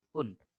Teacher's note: Ending D is ta sound.